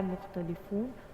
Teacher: مختلفون کا جو خا ہے وہ حلق کے پہلے حصے سے نکلتا ہے، جہاں پر آپ نوالا نگلتے ہیں وہ والا حصہ جو ہوتا ہے وہاں سے خا کا مخرج ہوتا ہے۔